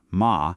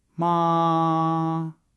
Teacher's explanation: The first tone, ma, is high and flat like you're holding a note.